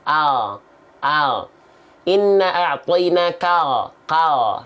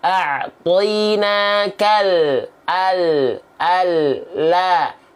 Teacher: Kalau huruf lam, kalau huruf L, ya, yang ini dilafalkan hanya disentuhkan ujung sisi lidah saja